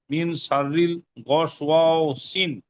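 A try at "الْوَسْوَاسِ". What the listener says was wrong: সিন নয়, এখানে লাম ল উচ্চারণ করবেন, সিল, ওয়াও নই, ওয়াও ওয়াও নই, ওয়াও আলিফ যাবার ও, সিল সিল খন্নাস।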